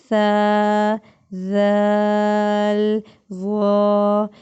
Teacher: زبان کی نوک جب اوپر والے 2 دانتوں کے سر، دیکھیں جب ہم لوگ ثا ذال ظا ادا کرتے ہیں تو ہماری زبان تھوڑی سی دانتوں کے باہر آتی ہے اور ان کے سرے سے ٹچ ہو رہی ہے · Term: حروف لثویہ